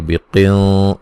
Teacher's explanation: یہاں نون ساکن کا موٹا اخفا ہے